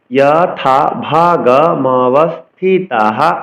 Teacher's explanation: বিসর্গের জন্য হ উচ্চারণ করতে হবে।